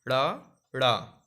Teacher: जिनके उच्चारण में जीभ पहले ऊपर उठकर मूर्धा का स्पर्श करके और फिर झटके से नीचे आए। तो आप जब ड़ा और ड़ा बोलेंगे तो देखिए ध्यान से, ऊपर जाके जीभ एकदम से नीचे आ रही है, ड़ा ड़ा, आप बोल के देखिए। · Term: उत्क्षिप्त